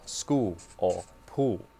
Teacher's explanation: in South Australia they might drop the L entirely and sound more like school or pool let's start with uh